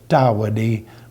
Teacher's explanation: the first use of the letter is soft, t, tawadi, but in the second use it sounds like a D